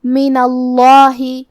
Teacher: کلمت من کے آخر میں نون پہ زبر ہے، لہذا ہمیں لفظ الجلالہ مطلب کلمت اللہ کے لام کو موٹی آواز میں پڑھنا ہے